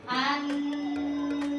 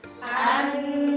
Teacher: maka saat membaca nun bertasydid kita tahan lama